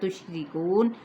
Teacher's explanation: را باریک پڑا جائے گا زیر کی وجہ سے. کو پہ واو مدہ اور نون پہ وقف کیا تو وقف بالاسکان ہو جائے گا.